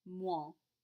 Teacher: It's like a combination of an OI and a nasal sound.